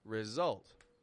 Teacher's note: This word has S beginning the strong part of the word, not the weak part of the word.